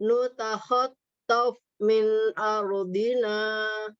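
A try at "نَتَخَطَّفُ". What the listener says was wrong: Fa-nya nggak kedengeran. Nutakhattaf. Tof. Ada yang terembus. Tof. Iya, agak nutup nih. Tof. Oke, nanti latihan huruf fa-nya.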